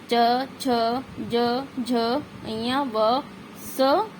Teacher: इन वर्णों में जीवा कठोर तालू का स्पर्श करती है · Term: तालव्य